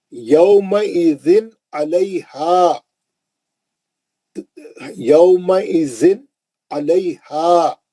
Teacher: تنوین کو جلدی پڑھے. کیوں؟ آگے اس کے بعد آنے والا حرف عین ہے، اسی لیے اظہار سے پڑھے